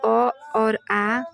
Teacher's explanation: कोमल तालव्य से अ और आ